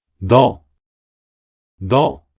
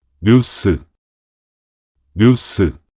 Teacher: the nasal consonant neun is pronounced by touching the tongue tip to the alveolar ridge and then releasing it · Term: initial nasal consonant